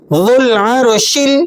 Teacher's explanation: وہو الغفور الودود، ذال لام پیش ذل، ذال لام پیش ذل، واو کو الف کو آپ نے بیچ میں سے سائلنٹ کر دینا ہے، ذال کو لام سے ملا کر پڑھیں گے۔